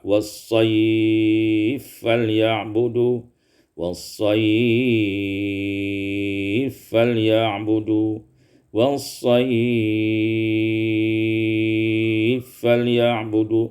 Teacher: idghamul fa pada fil fa, diidghamkan fa pada fa, was-sayf falya'budu, was-sayf falya'budu, was-sayf falya'budu, bisa dibaca qasar, tawassut dan isba'.